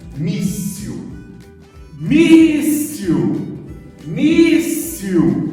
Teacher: A penúltima sílaba forte recebe o nome de paroxítona